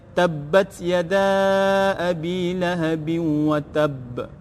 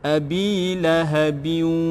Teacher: idgham masukkan ma'al gunnah berserta dengan dengung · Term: idgham ma'al gunnah